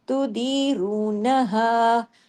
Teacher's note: नून को ज्यादा नहीं खींचा हा को खींचा